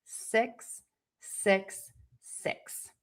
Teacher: So, just know that in America, we pronounce those words differently. And the word six is going to have a more closed mouth. And the tip of your tongue is going to be high and behind your top teeth, but it is not touching.